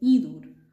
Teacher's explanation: this is just a slight nasalization and you will have to say inor